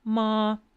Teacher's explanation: that steady unchanging sound that's high tone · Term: first tone